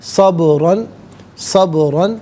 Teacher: صبراً میں با ساکن ہے لیکن چونکہ حرف قلقلہ ہے تو یہاں آواز لوٹتی بھی محسوس ہونی چاہیے، صبراً نہیں، صبراً، صبراً، را پر 2 زبر کی تنوین پر کر کے پڑھا جائے گا، اور ناظرین یہاں جب وقف کریں گے تو 2 زبر کی تنوین وقف میں الف سے چینج ہو جائے گی، تو اس وقت بھی را کو پر کر کے پڑھیں گے۔